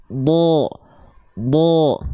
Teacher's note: ujung lidahnya tetap menempel ke langit-langit bagian depan tapi dia tidak kuat nempel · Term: huruf Dod